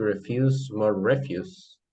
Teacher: the emphasis falls on the second syllable in the first word, refuse, and in the second word, the stress falls on the first syllable